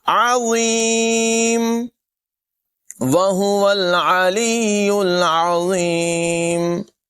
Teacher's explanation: ملائیں گے وَهُوَ الْعَلِيُّ الْعَظِيمُ عین کے بعد نمایاں کریں گے ضا کو پر پڑھیں گے اور سیٹی کے بغیر پڑھیں گے